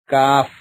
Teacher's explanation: زبان کی جڑ اور تالو کے سخت حصے سے ادا ہوتا ہے